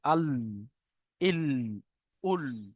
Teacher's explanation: জিভের আগার কিনারা এবং সামনের উপরের দুই দাঁতের গোড়ার সাথে লাগিয়ে উচ্চারিত হয়। জিভের আগার কিনারা, ওটা জিভের কিনারা ছিল মানে একদম জিভের সাইডে, এটা জিভের আগার কিনারা মানে একদম আগার দিকে এসে।